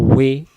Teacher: ওয়াও অক্ষর দুই ঠোঁটের গোল করে পাতলা আওয়াজে। ওয়াও অক্ষর দুই ঠোঁটের মাঝখানের ফাঁকা থেকে পড়তে হয়